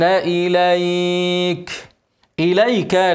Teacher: لو وقفت عليها هنمد ايه اقل حاجه حركتين اسمه مد لين